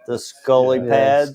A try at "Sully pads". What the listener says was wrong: Sully pads. not Scully.